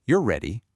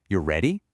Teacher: But what if I just pitch my voice up at the end and say, "You're ready?" The syntax hasn't changed one single bit, but practically, pragmatically, it is completely transformed into a question. That rising intonation, what we call a supersegmental feature, literally cancels my commitment to the truth of the statement.